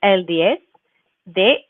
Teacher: Okay, so el 10, and you can hear again how I pronounce that with 10, even though it ends with the zeta, I'm pronouncing it as a soft S